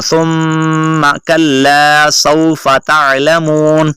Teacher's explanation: ثم کے اوپر آپ نے غنہ کرنا ہے اور اس کو ہلکا سا، اتنا زیادہ لمبا نہیں کرنا